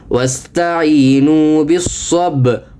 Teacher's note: یہاں با پر قلقلہ کریں اور صاد پر سختی کے ساتھ پڑھیں